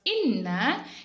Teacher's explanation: hukum bacaannya adalah Mad asli atau Mad thi'i yang panjangnya dua harkat